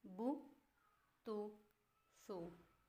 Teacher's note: उल्टी पेश होंठों को गोल करके थोड़ा सा खींचकर पढ़ा जाता है